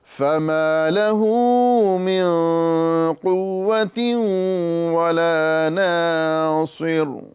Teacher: صاد کو بھی پر کرنا ہے اور صاد کی وجہ سے را کو بھی پر کرنا ہے